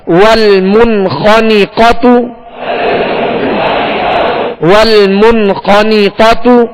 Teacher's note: تا پر پیش ہے، ہونٹوں کو گول کر کے معروف طریقے سے ادا کریں گے مگر یہ پیش بھی کھینچنے نہ پائے، دراز نہ ہو.